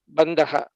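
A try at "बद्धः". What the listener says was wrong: Baddhaha. There's no nakara. Baddhaha. Dha Mahaprana. Baddhaha. Yuddham baddhaha. This is how the pronunciation will be.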